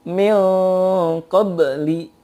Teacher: Kalau menghadapi kaf menjadi eng sempurna, menghadapi qaf eng dan juga ditebalkan. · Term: ikhfa